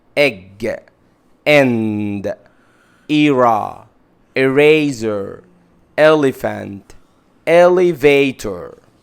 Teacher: أول حاجة هنتكلم عنه في أول الكلمة، كيف ينطق إذا جاء في أول الكلمة. بنطقه كده كأنه ألف وتحتها كسرة، كأني بنطق كلمة ابن